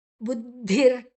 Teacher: ದ ಮತ್ತೆ ಧಿ ಮಹಾಪ್ರಾಣ ದ ಮಹಾಪ್ರಾಣ ಅಲ್ಲ ಅಲ್ಪಪ್ರಾಣ